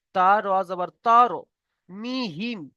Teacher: এখানে এক আলিফ পরিমাণ গুণনা করতে হবে কেন মিম সাকিনের পরে বা এসেছে এটা হচ্ছে ইফা সাফাবি ইফা